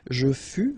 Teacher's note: keep in mind that final S is not pronounced